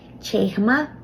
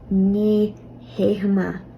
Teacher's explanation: You add the particle ni beforehand to negate the statement, and then you add an H after the initial T in chehama, and it changes from a ch sound to a h sound